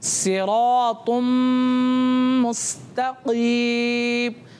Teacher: लेकिन यहाँ पर रा के ऊपर ज़बर आ रहा है, इसलिए इस रा को क्या करेंगे? मोटा करके यानी पुर करके पढ़ेंगे। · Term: रा को पुर